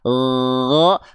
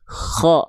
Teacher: kalau huruf gin enggak pakai nafas keluar, cuman ngalir suara aja.